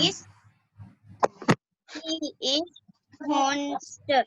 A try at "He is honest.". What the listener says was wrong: Honest नहीं बोलते. I told you when we say honest, H is silent there. So we have to pronounce that as honest.